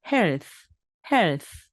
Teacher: 여러분이 빠르게 걷거나 달리기를 한 다음에 공기가 많이 나오는 h 발음이라고 말씀드렸습니다 · think, health 두 가지 다 목이 울리지 않고 바람이 나오는 바로 무성음 TH 발음입니다.